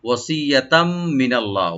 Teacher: তানবিনের পরে যে মিম আসছে, তো এটা এদগাম উইথ গুন্না করে আমরা করব